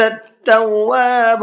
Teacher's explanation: تواب را کو پر کر کے پڑھیں گے اس لیے کہ را سے پہلے پیش ہے